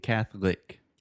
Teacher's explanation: in the middle we do not pronounce the oh just think cat cat put a th sound Cath and Catholic